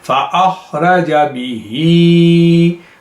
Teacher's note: فاخرجا به، یہ جا کو بعض مرتبہ دوست لمبا پڑھ دیتے ہیں، تو یہ جا جو ہے اسے لمبا کرنے کی کوئی وجہ نہیں ہے. فاخرجا به، اور ہی کو آپ دیکھیں اس کو پرولونگ کر رہے ہیں کہ اس میں کسرہ ہے اور وہ کھڑی کسرہ ہے.